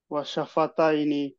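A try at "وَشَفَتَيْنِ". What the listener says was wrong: ওয়াকফ হলে আরেকটু টানবো।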